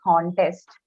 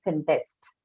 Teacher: The stress changes from first to second syllable if it is used as a verb. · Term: functional stress